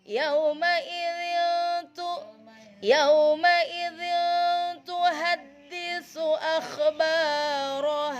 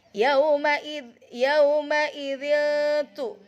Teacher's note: Enggak boleh dibaca zahir atau dibaca dengung karena ini huruf ikhfa bacanya samar.